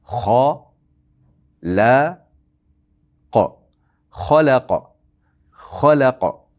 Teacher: Ham sukun bilan to'xtaganimiz uchun qalqalarga aylanadi.